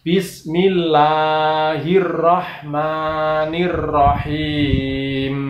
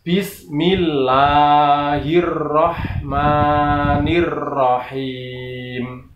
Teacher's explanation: mimnya itu tidak boleh ada ekornya atau dengungnya